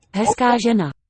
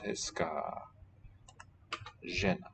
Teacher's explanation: the feminine agreement suffix on the adjective is long, while the noun itself ends in a short a vowel